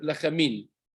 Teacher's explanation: If you say it fast without a pause, it would be heard lechamin, which would be one word because the mem and the mem, they're both silent, that is the same identical letter.